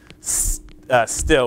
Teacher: So we get that real long puff of air. And for the word still, we would get a short puff of air